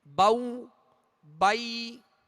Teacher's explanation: زبر ادا ہو کر جب یا ادا کریں گے تو آواز کو گرا دیں گے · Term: یا لین